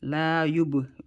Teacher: small qalqala because it's inside the word, the ba, and we bounce with a flat letter because ba is a flat letter